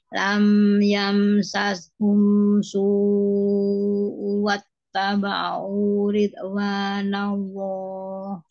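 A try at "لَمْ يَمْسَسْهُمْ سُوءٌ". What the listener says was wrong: Lam yam sashum su'u ke wau guna ditahan lebih lama su'u wattaba'u ridwanallah yo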